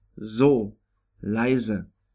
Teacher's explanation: S in German at the beginning of a word or syllable is pronounced like Z in English